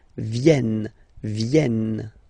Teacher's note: this classic ending ENT for the third person of the plural is here, but phonetically it doesn't exist, so you don't pronounce it